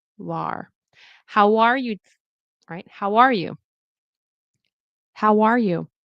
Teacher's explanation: No H. Get rid of the H.